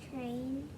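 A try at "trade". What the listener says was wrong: But there's no N. You're reading N instead of D. That's a D.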